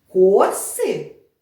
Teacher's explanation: наголос у нас буде стояти на перший склад на голосну о